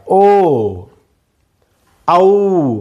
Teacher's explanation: आता कंठौष्ठ्य वर्ण म्हणजे कंठ उच्चार कंठातून होणार आणि ओठांची पण मदत घ्यावी लागणार, असे जे वर्ण आहेत त्यांना कंठौष्ठ्य वर्ण म्हणतात. ओ औ म्हणजे कंठातून उच्चार, ओठांची चुंबळ करावी लागते, तेव्हाच हे उच्चार होतात